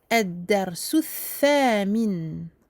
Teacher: Donc, le sin, on pose le bout de la langue tout en bas, qui touche les incisives inférieures, mais à l'intérieur de la bouche. Alors que pour le th, avec ces trois petits points, donc on sort un petit peu le bout de la langue.